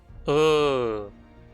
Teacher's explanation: E a sua contraparte arredondada Vogal central semifechada arredondada. A língua fica na mesma altura de [e] e [o], mas equilibrada na boca, e os lábios são arredondados.